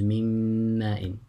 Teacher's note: When you conjoin them together, it becomes مِمَّاءٍ. So the noon and the mim, when they merge them together, it becomes one harf, a mim, which is مُشَدَّدًا. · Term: idgham